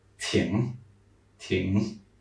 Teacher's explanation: If you remember the NG sound, it's like this very nasal N.